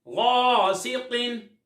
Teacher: غین کو پر پڑھتے ہیں کیونکہ حروف مصالیہ میں سے ہے، تو الف کو بھی پر یعنی موٹا پڑھیں گے۔